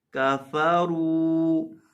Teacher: रॉ के ऊपर पेश है, रॉ के ऊपर जब पेश हो तो रॉ को मोटा करते हैं, तो रॉ को मोटा भी करेंगे और लंबा भी करेंगे।